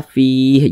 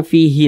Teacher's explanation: Huruf H ini kenapa kita sukunkan? Ini kalau kita berwakaf tepat di huruf H, maka kita baca fi.